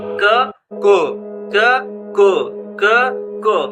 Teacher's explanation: जो हम गले के ऊपरी हिस्से से क बोलते हैं वही गले के निचले हिस्से से बोलने लगते हैं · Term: नुक्ता वाला क